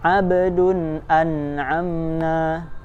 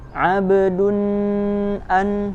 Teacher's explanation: dibaca jelas sesuai makhrojnya dan tanpa tambahan dengung